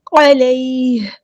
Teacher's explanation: علیہ، یہ علی نے نرمی سے موڑیں گے، ہا کو ہم ساکن کر دیں گے وقف کرتے ہوئے